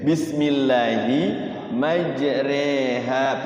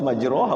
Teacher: imalah itu artinya adalah memiringkan bacaan fathah kepada kasroh. Jadi fathah tidak, kasroh juga tidak, miring.